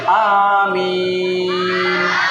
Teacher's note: আমিনটা বলবে প্রথমে অল্প টান, তারপরে বেশি টান